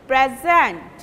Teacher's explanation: Present, present means gift, and when you are using it as a verb, you will give prominence in the second syllable.